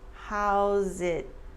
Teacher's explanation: The S at the end of how's turns into an SZ sound and it links to it.